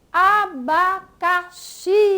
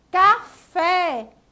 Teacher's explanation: oxítona que é a palavra que a sílaba tônica é a última